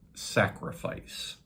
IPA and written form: ˈsæk.rɪ.faɪs (sacrifice)